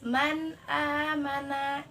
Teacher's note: kita harus membaca secara jelas. Jadi tidak memakai gunnah gitu. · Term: izhar